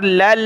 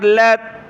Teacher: لام کو اگلی لام کے ساتھ ملایا، پھر اگلی لام کو تا کے ساتھ ملایا